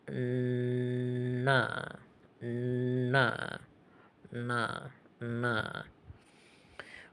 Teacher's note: And then we have the N sound from the retroflex position. So this is made by the tongue bending backwards and touching the uh roof of the mouth